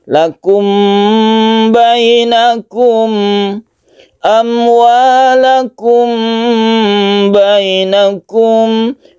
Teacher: Mem bertemu dengan ba ini tidak ketara samarnya karena makhraj dari keduanya itu bersama, yaitu makhrajnya ada di bibir. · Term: ikhfa syafawi